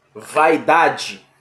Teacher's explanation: Vaidade. É outro ditongo decrescente. Começa forte e termina fraca.